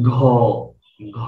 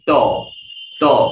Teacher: আপনি যদি উচ্চারণ করেন ঘ ঘ, তাহলে দেখবেন বেশি কাঁপবে। আপনি যদি উচ্চারণ করেন ত ত, কম কাঁপবে।